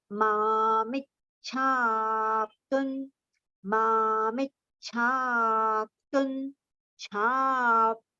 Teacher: Cha is only not cha, it is the joint letter that we have to pronounce. That cha we have to prolong a little.